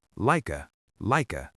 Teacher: And then we link like and a together, lika, lika. So the whole phrase flows together like water, kinda lika.